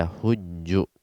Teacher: hajaja menjadi hajja ya, mudhari'nya asalnya yahjuju. Nah, karena sulit ya dua huruf yang sama di akhir sama-sama berharokat, sulit diucapkan, maka dia diidghamkan ya, ditasydidlah jimnya , kemudian mundurlah dhammahnya menjadi yahujju di sana. Ya hajja, yahujju,